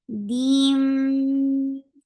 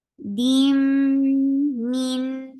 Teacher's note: This is idgham with gunna. So you are giving very nice gunna. Dim min for kasra give E sound, give attach with noon gets sifa tawassut and ruling if idhar.